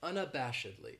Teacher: This adverb has 5 syllables, and the stress is on that third syllable, that bash, unabashedly. That second syllable has that schwa